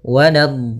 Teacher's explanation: Untuk mad lazim musaqqal kalimi atau kalimi musaqqal panjangnya 6 harakat, maka panjangkan dhatnya dulu 6 harakat, kemudian sempurnakan di dha-nya, kemudian baru masuk ke huruf lam. Nah, tadi juga pada huruf sebelumnya dhatnya harus ada istitalah sedikit.